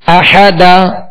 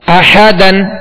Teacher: قرآن پاک میں جہاں بھی دو زبر آئیں کلمے کے آخر میں، اور اس کلمے کے آخری حرف پر دو زبر ہوں، وہاں وقف کیا جائے تو دو زبر کی تنوین کو الف سے بدل کر وقف کریں گے